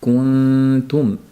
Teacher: Yo'q, t deb aytmaganimizdek, oddiy t, at deganimizda og'zimiz qanday tursa, kuntumda ixfosida ham xuddi shunday turadi